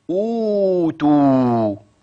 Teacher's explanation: الضمه الواو هتبقى كده او او او تو يبقى عملنا ايه ابدلنا الهمزه الثانيه حرف مد من جنس حركه الاولى · حفص بيمد قد ايه حركتين اتنين بس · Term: مد البدل, مد بدل